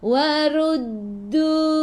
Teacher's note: Ra baca dengan tebal, ra baris depan, tekan ke dalam dal, dal ada sabdu.